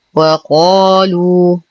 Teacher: نتم ضمة اللام نعطي المد الطبيعي بعدها حقه حركتين